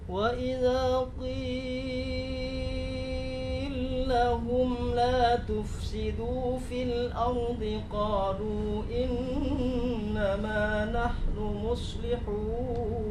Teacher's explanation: bacaan riwayat As-Susi dengan menggunakan idgham kabir pada qila lahum dan qasar pada mat'u munfasil